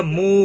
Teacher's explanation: مو واو مدہ ہے، 1 الف کے برابر کھینچ کر پڑھیں گے، نہ کو کھینچنا نہیں۔